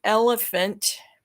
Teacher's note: voiced the ul is voiced the uh ella is voiced but the next phoneme which is spelled ph but it's actually pronounced as an f unvoiced